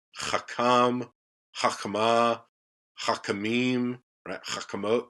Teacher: You've just got the reduction of that propretonic vowel. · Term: propretonic reduction